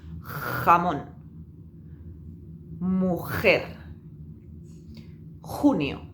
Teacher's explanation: la parte trasera de la lengua, la parte de atrás de la lengua, tiene que pegarse a la parte trasera del paladar. Sí, aquí atrás, lo más atrás posible, la pegamos. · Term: sonido de fricción